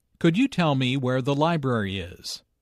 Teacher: Notice that library is stressed here because it is the word with the important information.